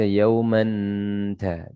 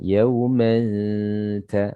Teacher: pembacaannya ikhfa, yaitu tanwinnya disamar-samarkan. Ya, disamar-samarkan karena memang namanya ikhfa itu ya samar ya.